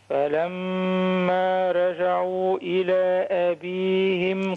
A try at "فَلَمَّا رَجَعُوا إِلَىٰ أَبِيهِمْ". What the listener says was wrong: فخم الراء فخم الراء فلما رجعوا رجعوا